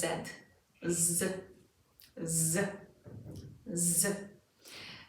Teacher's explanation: Z is the vibrating, harder version of the S sound. So whereas with an S, you do not really feel vibrations in your mouth, with Z, you definitely should.